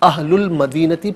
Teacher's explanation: درمیان میں سے الف یعنی حمزہ کو حذف کیا جائے گا، اہل المدینتی پڑھیں گے